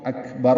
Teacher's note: جہاں پہ آخر میں رکنا ہو تو اکبر ہو جائے گا، را ساکن ہو جائے گا